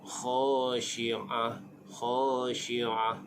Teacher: Huruf kha itu adalah huruf izhar. Khashi'ah, bunyinya ain di tengah halqum, di tengah kerongkong, dan diwaqafkan dengan ha.